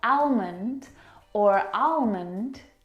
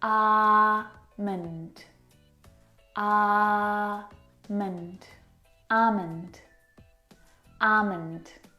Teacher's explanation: in this word the L is silent